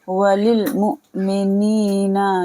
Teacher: حمزہ کے اوپر ساکین ہے تو جھٹکے سے ادا کریں گے